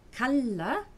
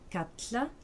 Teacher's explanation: Norrois kalla, qui veut dire appeler, devient katla avec un élément dental